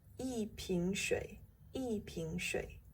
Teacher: A bottle of water is 一瓶水. E changes its tone from the first to the fourth here.